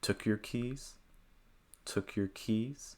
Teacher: I would place the heavier stress here on keys.